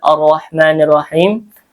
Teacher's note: Ini roya dibaca tafhim tebal